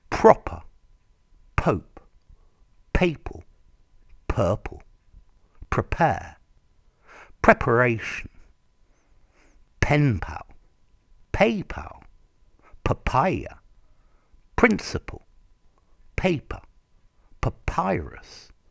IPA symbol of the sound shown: p